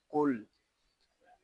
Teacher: قاف حروف مستعلیہ میں سے ہے، اس کو پوری یعنی موٹا پڑھیں گے۔ لام ساکن ہے، اس کو سکون کے ساتھ ادا کریں گے۔